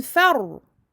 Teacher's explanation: Le ra, bayniyah, entre deux, écoulement partiel.